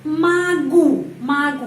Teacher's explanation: O dibaca a karena penekanannya berada pada huruf u karena itu O dibaca a magu magu ya penekanannya pada huruf